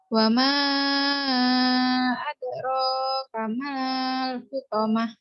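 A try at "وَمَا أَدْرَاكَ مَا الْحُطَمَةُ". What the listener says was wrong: Mal, pendek. Mal, wa ma adraka mal hutamah.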